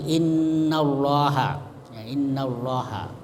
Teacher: lam ada dua lam di situ lam pertama dan kedua jadi lam kedua itu disebut lamul mufakhamah ya lam tebal dibaca tebal ya karena ada baris fathah sebelumnya